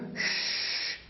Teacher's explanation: शलगम वाले श की ध्वनि तब आती है जब आप अपनी जीभ को ऊपर वाले तालू की तरफ थोड़ा सा घुमा दें